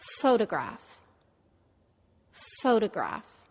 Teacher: photograph the first syllable is stressed foe the second syllable is de-stressed it becomes da and the third syllable is a secondary stress it's somewhere in · stressed foe the second syllable is de-stressed it becomes da and the third syllable is a secondary stress it's somewhere in the middle